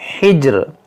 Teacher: हा है और जी में कलकला करें और रा को साकिन करें